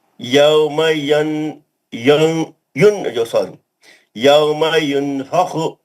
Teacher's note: نون کا اخفا کریے, نون کو چھپا کے غنہ کریے. یوم ینفخ یوم ینفخ فیخو نہیں فخو فا پہ زبر ینفخ نون ساکن کا اخفا حرف فا من طغى غنہ کریے.